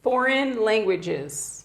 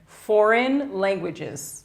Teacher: C'est assez rare que le A soit prononcé comme un i court, mais là c'est bien le cas et ça sera d'autant plus facile à faire si vous mettez bien l'accent tonique ici.